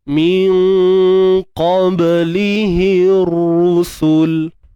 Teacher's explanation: Nun mati bertemu qaf, ikhfa hakiki.